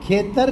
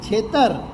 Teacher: ખ નો છ થયો કંઠ્યનું તાલવ્ય થયું